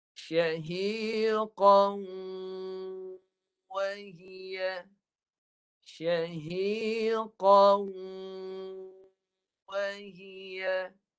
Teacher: 2 harakat tu kita dia masuk ke hidung tu. Fokus suara yang ke hidung tu. Masuk hidung je, kira 2. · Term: dengung